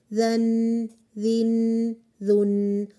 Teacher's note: آپ کی ٹپ کی ٹنگ سے فرنٹ کی اپر 2 ٹیتھ کے ساتھ جب وہ لگتی ہے وہاں سے یہ ادا ہوتے ہیں، اور ان میں سافٹنس ان کی پہچان ہے، صفت ہے ان کی۔ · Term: حروف اللثویہ